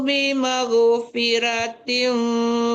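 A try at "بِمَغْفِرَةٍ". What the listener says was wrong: Ya, membaca ghain itu tebal ya Bu, jangan bimag, jangan ke g ya, bimag, tebalkan. Fabashirhu bimag. Ya gitu, bimag, tebalkan ghainnya.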